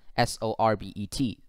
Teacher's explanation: And this word, when you look at the International Phonetic Alphabet, it is written like this. It is written with two syllables, and the second syllable is stressed.